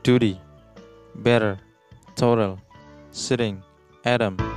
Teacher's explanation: huruf T yang di antara vowel itu diucapkan dengan bunyi D yang cepat